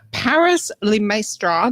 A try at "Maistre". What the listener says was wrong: So it's actually pronounced 𝐿emaître, so it's a silent S in my name, but people often just say 𝐿emaître, lepastry, whatever.